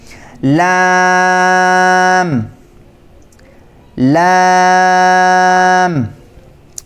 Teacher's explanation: اس کو 3 الف کی مقدار کھینچ کر پڑھیں گے، اور اس کی آواز باریک پتلی آواز ہے۔ لام، شروع میں ل یہ آواز ہے، انگریزی کے ایل حرف کی آواز ہے، لام لام۔